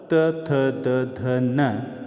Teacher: त वर्ग, त, थ, द, ध, न, ये दांतों का स्पर्श करती है